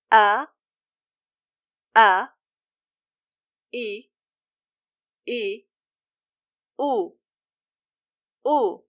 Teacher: It is pronounced by closing the vocal cords completely. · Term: Hamzat al-Qata'